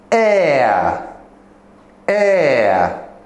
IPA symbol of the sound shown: eə